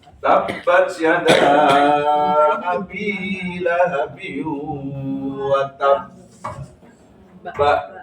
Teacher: pantulannya condong ke fathah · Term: qalqalah